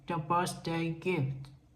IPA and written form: ðə ˈbɜrθˌdeɪ gɪft (The Birthday Gift)